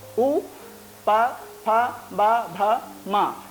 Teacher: तो ये ओष्ठ स्थानीय वर्ण हो गए